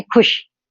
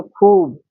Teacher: खुश में अपने को कम समय लगा। तो ये छोटे ऊ की मात्रा हो गई। खूब में ज्यादा लगा तो बड़े ऊ की मात्रा।